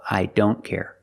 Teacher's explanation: the t is between consonants so we don't pronounce it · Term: silent